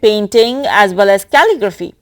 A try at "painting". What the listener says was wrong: Now, when you say painting, you want to pronounce that P with more aspiration.